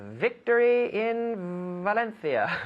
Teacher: so it's an F that is voiced with the vocal cords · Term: V sound